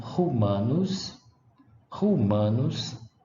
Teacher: Olha a diferença de pronúncia do primeiro U que está acentuado como longo e o que não está acentuado